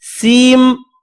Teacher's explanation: یہاں پر جب بھی سین کے بعد میم آ رہا ہو تو سین کا جو نون آخر میں آ رہا ہے اس کو میم میں بدل دینا ہے